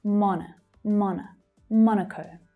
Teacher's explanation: Monaco, Monaco. So the first syllable is stressed and the second syllable relaxes to become the schwa.